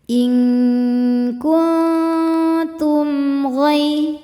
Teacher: Karena mim sukun tidak menghadapi huruf mim atau huruf ba melainkan menghadapi huruf ghain. Cara bacanya mim sukun dibaca jelas. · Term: izhar syafawi, idhar syafawi